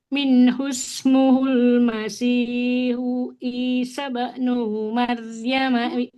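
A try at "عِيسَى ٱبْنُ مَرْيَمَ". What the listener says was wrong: Isa bnu Maryam. Nunnya nggak boleh panjang. Masih, masih panjang. lebih dipelankan Ibu. cepat-cepat. Nah, coba tempo ngajinya segitu aja Ibu. Jangan terlalu cepat.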